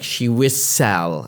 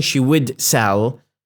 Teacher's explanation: I'm just giving more weight to sell her fruit